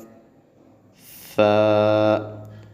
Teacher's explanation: جب ثا کو ادا کرنا ہے تو زبان کو اوپر دانتوں کے ساتھ لگانا ہے، ٹھیک ہے؟ اس میں سیٹی پیدا نہیں کرنی